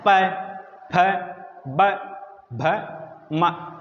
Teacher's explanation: हैं कि नहीं होते ये होट होते हैं प्यारे-प्यारे दोनों होठ दोनों होठ जब मिलते हैं तो प वर्ग की ध्वनि आती है · अब बात आती है पै वर्ग की, तो पै वर्ग जैसे पै बोलेंगे तो आपको पता है कि दांत के आगे क्या होता है, आपके प्यारे प्यारे होठ होते हैं कि नहीं होते, ये होठ होते हैं प्यारे प्यारे, दोनों होठ जब मिलते हैं तो पै वर्ग की ध्वनि आती है